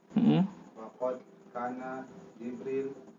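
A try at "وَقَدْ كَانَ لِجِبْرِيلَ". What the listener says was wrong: Wa qad kana li, ada li situ.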